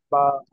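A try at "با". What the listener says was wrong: জি, আরেকটু টান দেন। বা।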